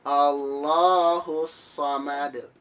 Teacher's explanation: nama hukumnya adalah qolqolah kubro dengan cara dipantulkan